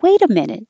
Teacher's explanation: depends on how friendly you want to be, as how high you go in pitch